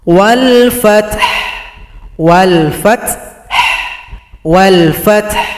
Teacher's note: Perhatikan kalau berhenti caranya adalah ha disukunkan berikan bunyi vokal. Wal fath. Wal fath.